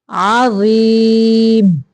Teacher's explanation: تنوین کو بھی ظاہر کرنا ہے، اظہار کا قاعدہ ہے، عظیم، ضا کو تھوڑا موٹا نکالنا ہے نرمی کے ساتھ